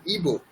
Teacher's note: এটা এবো নয়, ইবো, ঠিক আছে। ইবো হ্রস্ব ই